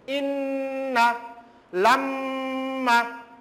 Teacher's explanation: Because when we will utter the gunna through the mim and noon, then the gunna sound will come from the base of the nose